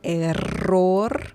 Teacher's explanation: You need to roll your R real good. Error. Your double R right here.